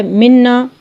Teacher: منا خاص آواز نکل رہی ہے خیشوم سے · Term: غنہ